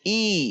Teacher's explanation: Kasrah tidak dibaca E atau E atau E, tetapi I.